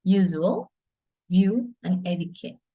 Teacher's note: Place of articulation is a palatal semivowel. The tongue is in the position of close from the vowel.